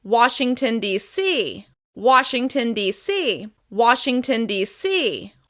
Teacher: with stress on the C at the end of that word